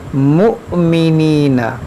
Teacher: حمزہ ساکنہ ہے، اس کو جھٹکا دے کر پڑھیں گے